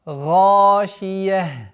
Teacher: Звук О, как вы говорили, в арабском языке отсутствует. И поэтому нужно максимально твердое произношение звука А